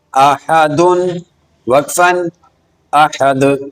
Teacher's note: اس حرف پر دال ساکن ہے تو اس پر قلقلہ کریں گے